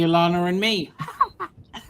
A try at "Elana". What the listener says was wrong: Elana and me, not Allah. Thank you.